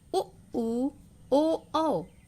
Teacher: उ ऊ ओ औ, ये जो 4 वर्ड हैं इनको बोलने में हमारा ओष्ठ की आकृति वृत्ताकार हो जाता है